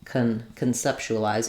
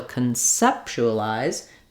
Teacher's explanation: That vowel is going to be longer, and instead of having the letter O say ah like in concept, now it's going to be a schwa sound, and it's going to sound like kun.